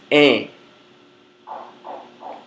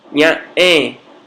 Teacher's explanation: Nasalizando o E aberto, teríamos EN. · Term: E nasal